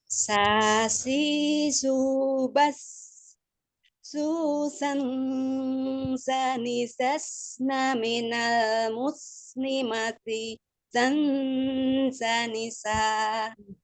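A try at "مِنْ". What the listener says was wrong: Ini larinya ke nun, bukan lari ke makhraj sesudahnya ya. Makhrajnya itu di nunnya ya. Jadi dia mengalirnya dia susah ya. Karena izharnya dibacanya izhar gitu, cuman izhar yang ditahan. Jadi kayak gini bacanya san gitu kan. Itu kan izhar sannya, tapi dia ditahan gitu kan.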